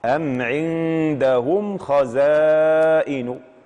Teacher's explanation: كيف يتم الإظهار؟ بإخراج الميم الساكنة من مخرجها عادية بدون غنة ولا تمطيط ولا تشديد.